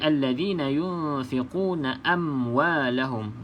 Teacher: Pastikan tidak ada lantunan ya, sahabat-sahabat. Mim ni bukan qalqalah.